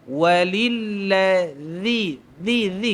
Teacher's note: Zal ni kena keluar lidah pada mulut